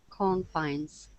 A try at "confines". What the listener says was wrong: Mm-hmm.